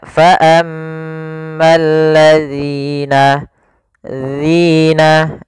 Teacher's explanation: Agar sempurna dari makhraj dan sifatnya adalah ujung lidah kita tempelkan dengan gigi seri atas, agak kita keluarkan sedikit sehingga berbunyi zi. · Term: huruf zal